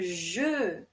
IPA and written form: ʒø (jeu)